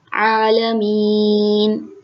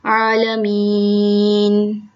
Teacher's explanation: جب ہم وقف کرتے ہیں تو اس کو حالت وقف میں 3 الف کے برابر کھینچتے ہیں، عالمین۔ 3 الف کے برابر میں کیسے آپ کو اگزامپل دوں کہ آپ کی جو یہ 5 انگلیاں ہیں ان میں سے 3 انگلیوں کو کھولیں، جتنی دیر 3 انگلیوں کو کھولنے میں لگے گی اتنی دیر میں یہ اس کا وقف ادا ہوگا، عالمین۔